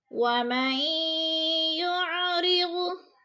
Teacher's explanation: لنفتنہم فیہ ومن یعرض، ومن پہ جو ہے ادغام ہو رہا ہے، میم کو یا کے ساتھ ملا کر ادغام کریں گے، نون ساکن کو نہیں پڑھیں گے۔ ومن یعرض، را باریک پڑھا جائے گا، کیونکہ را باریک اس لیے پڑھا جائے گا، را کے نیچے زیر ہے۔